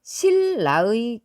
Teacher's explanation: 비음인 느가 유음인 르를 만났을 때 얘가 유음 르로 소리나는 현상을 말하는 거예요. 실라의 경우를 보면 앞에 있는 느가 뒤에 있는 유음을 만났기 때문에 르러 교체되었습니다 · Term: 유음화